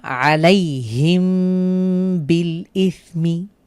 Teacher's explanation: বুঝতেই পারছেন আমরা এখানে গুন্না করছি মিম সাকিনের উপরে, কারণ এরপরে বা এসেছে। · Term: ইকফায়ে শাফা উই